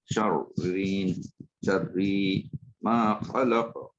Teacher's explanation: দুইটাই, এই তো প্রথমটা সাকিন, প্রথমটা সাকিন, পরেরটা জের। প্রথমটা মোটা হচ্ছে তারপরটা পাতলা হচ্ছে, তো শাররি, শাররিন, রিটা পাতলা হবে, আর প্রথমটা মোটা হবে।